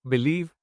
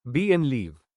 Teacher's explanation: That part is called the stressed syllable. Example, in the word believe, the second part leave is said with more force. This is the word stress.